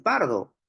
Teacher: esa P de pardo también es una oclusiva, ¿cierto? Es una oclusiva bilabial sorda.